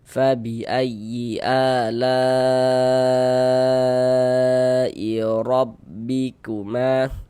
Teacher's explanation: Huruf ra memiliki ini tanda baca fathan ya, baris di atas ini harokat fathah, maka ini huruf ra dibaca tebal, dibaca tafkhim sehingga pangkal lidah kita naik terangkat ke atas ketika kita mengucapkannya